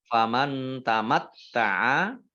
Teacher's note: nun sukun bertemu dengan huruf ta, bacaan ikhfa, ya dibaca samar-samar. Kemudian taknya dibaca double, ada tasdidnya.